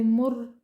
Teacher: را ساکن اس سے پہلے پیش ہونے کی وجہ سے ہم را کو موٹا پڑھیں گے